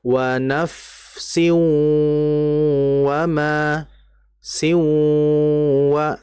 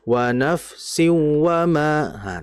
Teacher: Ini disebut dengan idgham bi gunnah. Artinya kita menahan terlebih dahulu bacaan gunnah pada tanwinnya sebelum dimasukkan ke waw